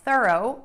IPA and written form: θɜroʊ (THOROUGH)